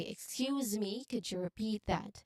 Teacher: When we say it more naturally, we say, excuse me, could you repeat that? Basically, the stress is on repeat, the second syllable of repeat, and the second syllable also in excuse.